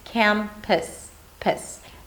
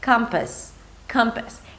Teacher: So it's not an U sound, it's not campus or campus, it's campus, pis. Make sure that you do stick the tongue forward for the front vowel A,